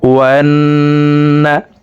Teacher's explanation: ওয়ান এখানে ওয়াজিব গুন্নাহ, 3 সেকেন্ড পরিমাণ গুন্নাহ করে পড়ব। ওয়ান-নাসারা, সদের উপরে খাড়া জবর আছে, তাই উপরের দিকে ধাবিত করে সদ হরফকে একালিফ টেনে পড়বো।